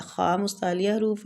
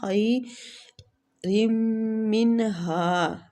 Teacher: خا مستعلیہ حروف ہے، آگے یا لین ہو رہی ہے